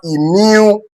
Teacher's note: And the rule states whenever a particular noun ends with a letter Y, you are expected to stress a particular word on the third syllable, starting from the end of that word